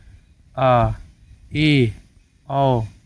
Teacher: विवृत की तुलना में थोड़ा कम खुलता है अर्थात मुंह आधे से अधिक खुलता है आधा से अधिक खुलता है क्योंकि विवृत में तो पूरा खुल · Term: अर्ध विवृत स्वर